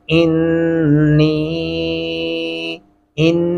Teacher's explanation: انی آمنتو پڑھنا بالکل غلط ہوگا کیونکہ یا کے اوپر دو الفی مدہ اور جزم آ چکا ہے، تو اس لیے نون کی آواز کو لمبا بھی کرنا ہے اور الف کو نون کے ساتھ ملانا بھی ہے، جیسا کہ انی، ان، یہ غنہ ہو گیا اور نون کے ساتھ مل بھی گیا، اور نی، یہ آواز لمبی ہو گئی مدے کی وجہ سے۔